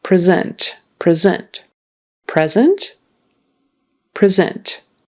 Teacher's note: we put the syllable stress on the second syllable then that is a verb